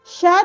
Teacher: श ध्वनि का उच्चारण स्थान है तालु।